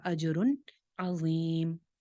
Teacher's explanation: اجرن کے اوپر ہم کوئی غنہ نہیں کریں گے کیونکہ آگے عین آ رہا ہے حروف حلقی میں سے، تو یہاں پہ اظہار ہو جائے گا اجرن عظیم.